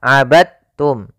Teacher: jangan dibaca abadtum ya tapi langsung dimasukkan ke ta abadum bukan abadtum ya Meskipun Dal termasuk huruf Qalqalah karena dia